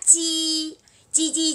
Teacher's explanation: đọc bằng cái đầu lưỡi của mình chữ qu đó đó nó đọc bằng đầu lưỡi của mình nó bật cái hơi ra